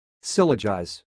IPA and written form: sɪˈlɒdʒaɪz (syllogize)